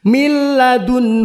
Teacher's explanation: melebur tapi tidak berdengung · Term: idgham bilagunnah